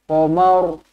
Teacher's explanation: Wasakhkhara syamsa wal qamar. Mar pendek sahaja Tebalkan ra. Qamar. Macam tu.